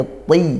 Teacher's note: Nah itu seperti Ta makhrajnya sama cuman dia tebal